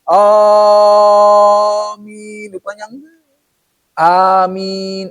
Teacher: minya panjang gitu mad arid li sukun kelompok mad far'i enam harakat